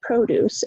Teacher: First syllable is stressed, produce, it's a noun.